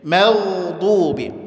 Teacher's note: Baik, mimnya tipis, gha-nya tebal.